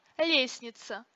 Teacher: лестница произносится без звука т